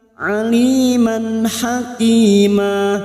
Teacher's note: Aliman fathah tanwin yang bertemu ha, nun sukun atau tanwin yang bertemu dengan 6 huruf ini, hamzah, ha, kha, ain, ghain, termasuk huruf ha ini karena fathah tanwin yang bertemu ha dibaca jelas tanpa mendengung